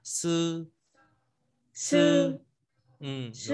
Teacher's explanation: âm đầu lưỡi để trên răng hàm trên, hơi ra tại hai răng cửa